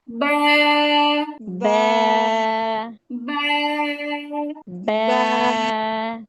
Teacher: বা উচ্চারিত হয় দুই ঠোঁটের ভিজা জায়গা থেকে। নর্মালি ঠোঁট যেভাবে লেগে থাকে সেখান থেকেই।